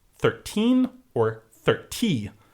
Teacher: they say their T's very strongly in British English with your numbers